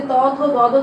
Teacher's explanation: তারপর আছে কি এই যে ত, থ, দ, দ দন্ত ন তবর্গীয় ধ্বনি, তাহলে এটার উচ্চারণ স্থান হচ্ছে কি দন্ত। ত উচ্চারণ করার সময় তোমরা নিজেরাই দেখো যে জিহ্বা দাঁতকে স্পর্শ করছে অর্থাৎ সামনের পাটি দাঁতের সম্মুখে প্রসারিত হয়ে দাঁতের গোড়ার অংশকে স্পর্শ করছে বলে এটা বলা হচ্ছে দন্তধ্বনি।